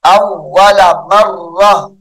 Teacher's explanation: اول مرت وقف کی حالت میں مرہ پڑھیں گے